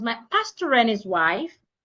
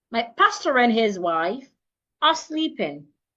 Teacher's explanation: So pastor and becomes one word. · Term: link